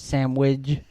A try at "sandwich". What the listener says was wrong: There's no G. there's no G.